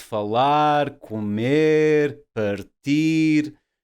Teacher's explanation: falar, comer, partir, they will be stressed on the last syllable